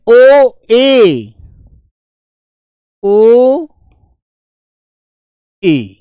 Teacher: अर्ध संवृत जिनमें मुख द्वार संवृत स्वर की अपेक्षा थोड़ा ज्यादा खुलता है।